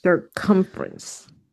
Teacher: the accent is on the second syllable